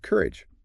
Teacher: Stress on the first syllable sounds like courage, not Q-R-H-E-E.